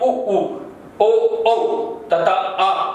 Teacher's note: ये पीछे से अर्थात जीभ के अंतिम वाले हिस्से से उच्चारित होते हैं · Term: पस स्वर